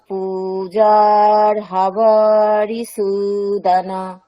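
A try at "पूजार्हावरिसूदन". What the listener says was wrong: আচ্ছা পূজার হাটা কি হ্রস্ব আছে না দীর্ঘ? তিনটেই তো দীর্ঘ ম্যাডাম, পূজার হা তিনটেই দীর্ঘ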